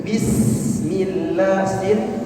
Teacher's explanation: sin mempunyai sifat hamas, ya, mengalir nafas.